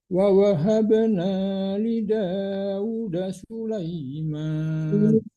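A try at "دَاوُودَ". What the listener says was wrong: Daud, panjangkan U-nya Pak.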